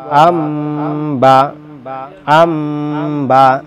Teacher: মিমটাকে ধরতে হবে নুনটা বাদ যাবে এখানে বলছে নুনকে মিম ধরে গুন্না করে পড়তে হয় তাহলে এই নুনটাকে মিম ধরে পড়তে হবে। · নুনকে মিম ধরে গুণনা করে পড়তে হয় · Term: ইকলাব